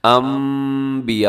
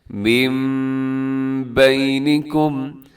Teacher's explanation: یہاں نون ساکن بھی ہے اور اس کے بعد با بھی آ رہا ہے، تو ہم کیا کریں گے، نون ساکن کو ہم میم کے ساتھ تبدیل کر کے پڑھتے ہیں انبیاء، اور ساتھ غنہ بھی کریں، آواز کو ناک میں بھی لے کے جانا ہے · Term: اقلاب